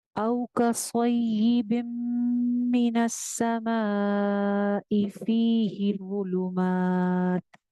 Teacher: मद को दो अलिफ लंबा करना है, वॉ में सीटी नहीं आनी चाहिए, वॉ हैवी भी है।